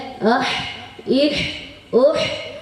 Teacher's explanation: عین، ہا کا مخرج گلے کے بیچ کے حصے سے ادا ہوتا ہے